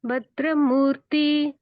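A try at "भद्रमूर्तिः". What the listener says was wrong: in ದ second line ಭಗಿನಿ ಭದ್ರಮೂರ್ತಿ so ದೇರ್ is A ವಿಸರ್ಗ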